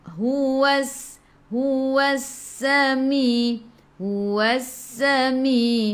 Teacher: Alif lam syamsiyah, lam tak ada sukun selepasnya ada sabdu. Terus tekan ke dalam sin dan bunyikan sifat huruf sin safir.